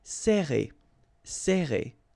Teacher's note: you get this E and then double R after that. So it will open the sound of E, okay? So you will pronounce it like E.